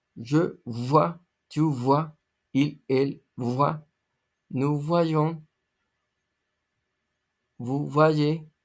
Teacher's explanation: se pronuncia como una B bilabial con los dientes casi cerrados expulsando aire